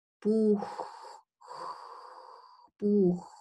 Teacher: You know, the velum is the soft part of your palate, and and the as in the Buch, it's the velum, so the back of the tongue and the velum come together. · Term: velar fricative